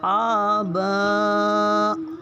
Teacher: اور با پہ مد بھی ہے تو اس کو 3 الف یعنی 4 حرکات کے برابر کھینچ کے پڑھیں گے